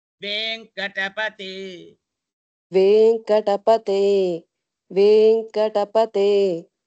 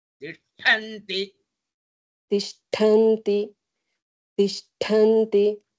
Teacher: both are same group, but the second one is Alpha prana. The first one is Mahaprana. So the second one is pronounced from the tip of the tongue, and the first one is pronounced from the middle of the tongue, upper palate with a lot of strength.